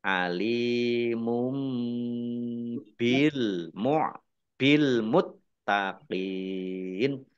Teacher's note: tanwin bertemu dengan huruf ba bacaan iqlab dibaca membalik tanwinnya dibaca Mim